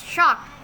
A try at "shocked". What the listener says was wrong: Shocked. Bukan shocket, shocked.